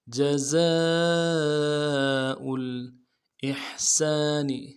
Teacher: زا کے ساتھ الف مدہ ہے، الف مدہ کے اوپر مد اصلی ہے، تین الف مدار میں کھینچیں گے ، حمزہ کو لام کے ساتھ ملائیں گے۔ جزاء الاحسان، احسانی،